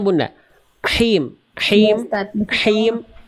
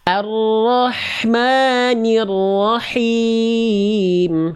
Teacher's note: dilafalkan dari tengah tenggorokan dirasakan dia ada bisikan